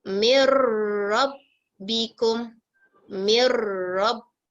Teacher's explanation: Okay, jadi macam gini Ni, terus masukkan pada huruf ra tapi tanpa dengung